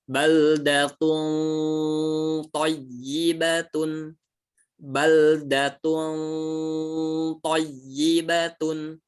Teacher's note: Tapi bedanya ya, kalau yang to ini belakang lidahnya pun naik ya. Jadi selain ujung lidahnya diarahkan ke belakang gigi atas, belakang lidahnya pun naik ya. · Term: ikhfa